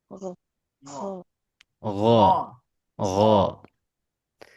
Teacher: Gesekannya lebih lebih kecil Bu. Karena apa? Karena dia bukan huruf hames.